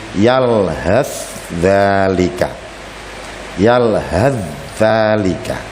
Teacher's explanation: cara membacanya sama yaitu memasukkan huruf yang pertama ke huruf yang kedua sehingga seperti bertasydid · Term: Idgham mutaqaribain